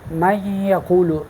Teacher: من یقول میں غنہ ہے، یعنی آواز ناک کو جاتی ہے